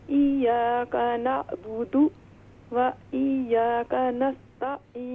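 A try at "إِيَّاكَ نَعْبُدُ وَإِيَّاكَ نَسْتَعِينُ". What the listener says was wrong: व इय्याका नहीं, ये देखें यहाँ पर या पर दोनों या जो है मुशद्दद हैं, इन पर तशदीद है, तो हम इससे पढ़ेंगे इय्याका नअबुदु व इय्याका नस्तईन।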